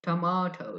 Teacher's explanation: The British people also say tomato, tomato. The stress on the second syllable